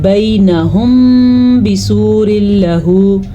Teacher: میم ساکن کے بعد با آ جائے تو دونوں ہونٹ بند ہو جائیں گے اور غننے کی کیفیت پیدا ہو جائے گی ، اس قاعدے کا نام ہے اخفاء شفوی، پچھلی کلاسز میں